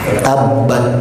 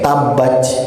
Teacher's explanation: usahakan tak yang sukun dan mati ini mengalir udaranya. Tabat, tuh ada udara. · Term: dialirkan udara